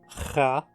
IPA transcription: ʀa